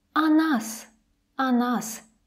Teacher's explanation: the preposition o is close to the stressed syllable that's why it sounds more like ah